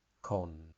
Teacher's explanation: this word has no tone it's just a boring monotonous sound